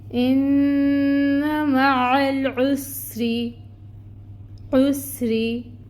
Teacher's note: اور پھر را ہے، را کے نیچے کسرہ کی حرکت ہے، 1 کاؤنٹ حرکت کو ادا کریں گے اور را کو باریک پڑھیں گے کیونکہ نیچے زیر کی حرکت ہے